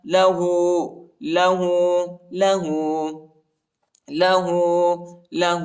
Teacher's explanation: ہاں پر الٹا پیش ہے، اس کو ایک الف کی مقدار تک کھینچیں گے.